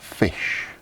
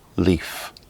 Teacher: the vocal cords do not vibrate during its production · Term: voiceless consonant sound